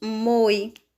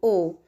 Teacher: Se não existisse esse acento, nós pronunciaríamos moi, com o som fechado, com o O fechado